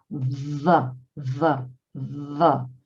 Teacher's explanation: So you can see that what I'm doing is I'm putting my top teeth on my bottom lip, almost biting into my bottom lip and making a sound with my vocal cords